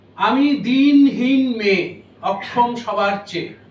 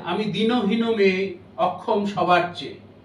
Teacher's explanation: যখন আমি দিনহীন বললাম তখন ওটা দীর্ঘ করে উচ্চারণ করা হলো ওটা দুই মাত্রা হয়ে গেল আর যখন দিনহীন বললাম তখন ওটা একমাত্রা থেকে গেল